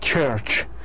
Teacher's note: This is affricate, voiceless, and alveopalatal or post-alveolar.